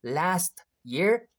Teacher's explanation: normally Americans don't pronounce t sound after s